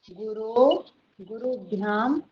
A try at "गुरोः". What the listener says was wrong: विसर्गः न त्यजनीयः। अस्तु विसर्गस्य अपि महत्त्वं वर्तते।